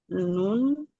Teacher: He eh ujung lidah bertemu gusi ee gusi atas di tempat tumbuh gigi seri. Ujung lidah bertemu dengan gusi atas